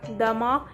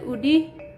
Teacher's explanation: Konsonan hambat alveolar bersuara D dilafalkan sama dengan konsonan T, tetapi pita suara bergetar